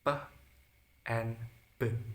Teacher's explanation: Sounds made using both lips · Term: bilabial